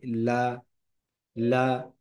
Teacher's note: লাম হরফটি জিহ্বার আগা অগ্র তালুর সাথে লাগিয়ে উচ্চারিত হয়, লা, লা।